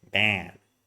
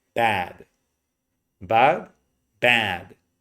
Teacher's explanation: Okay, really high, really stretch it out. Maybe the first time it's gonna sound like this, bad, very nasal. But eventually you're gonna reduce it and say bad, bad, bad.